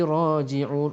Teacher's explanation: Ra tebal kerana ra berbaris atas.